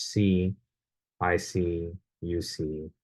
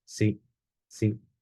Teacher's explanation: the Spanish is much shorter it doesn't hang um it's not elongated like that and then also in terms · So we can really see this if you compare the English C, I see, you see, with the Spanish see, see. The Spanish is much shorter. It doesn't hang. Um, it's not elongated like that.